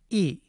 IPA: i